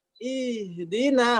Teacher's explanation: Kemudian dia dimaksimalkan sifat hamesnya dan rokhawahnya. Ihdina harus dimaksimalkan rokhawah dan hamesnya supaya eksis. Sehingga di sini agak panjang haknya itu. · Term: khofanya huruf H